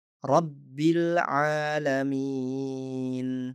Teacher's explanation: Jadi di sini kami menghubungkan ba langsung ke lam dan membaca rabbil alamin. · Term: hamzah wasal